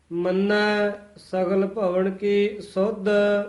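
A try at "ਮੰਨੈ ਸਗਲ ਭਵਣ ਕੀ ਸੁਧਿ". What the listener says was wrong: ਇਹ ਵੀ ਕੀ ਪਦ ਤੇ ਠਮਕ ਜੀ ਲਾ ਕੇ ਬੋਲਣਾ, ਕੀ ਸੁਧ ਨਹੀਂ ਕਹਿਣਾ ਹੈ। ਮੰਨੈ ਪਦ ਤੇ ਵਿਸਰਾਮ ਹੈ।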